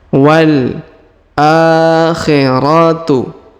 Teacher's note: huruf a dipanjangkan dua harakat di sini ya karena ada Alif kecil di atasnya